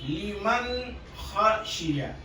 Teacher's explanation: نون کے اندر جو صفاتی غنہ ہے وہی ادا ہوگا، اس سے زیادہ نہیں بولیں گے. حروف حلقی آ کر کے غنے کو اتنا ہی رہنے دیتا ہے جتنا کہ اس کا حق ہے، اس کے آگے نہیں.